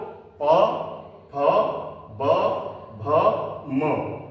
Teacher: ये हमारे ओष्ठ वर्ण है और इनका स्थान क्या होता है? हमारे ओष्ठ यानी ओठ